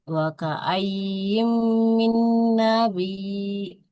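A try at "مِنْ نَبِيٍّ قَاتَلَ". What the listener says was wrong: Min nabiyyin. Min nabiyyin. Tanwin Ibu ya. Tanwin kasroh ketemu qaf. Maka dihukumi ikhfa. Wa ka'ayyim min nabiyyin qatala ma'ahu ribbiyyu.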